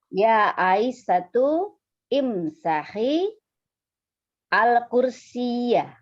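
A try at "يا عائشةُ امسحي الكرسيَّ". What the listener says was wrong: Ya, sekarang diulang tanpa diputus antara Aisyatu dengan imsahinya. Ya, betul sekali.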